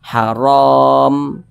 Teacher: yakni yakni dibaca tebal apabila huruf ro memiliki tanda baca fathah maka huruf ro dibaca tebal sehingga pangkal lidah kita itu naik ke atas · Maka huruf ra dibaca tebal sehingga pangkal lidah kita itu naik ke atas. Haram. Nah, kemudian ra dibaca panjang.